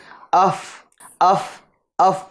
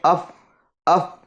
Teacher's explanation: فا جو ادا کریں گے وہ دونوں ہونٹ نہیں ملیں گے ٹھیک ہے بلکہ اوپر کے دانتوں کا کنارہ اور نچلے ہونٹ · دونوں ہونٹوں سے فا ادا نہیں ہوتا بلکہ اوپر کے دانتوں کا کنارہ اور نچلے ہونٹ کا تر حصہ ٹھیک ہے یہ ملنے سے فا ادا ہوتا ہے ٹھیک ہے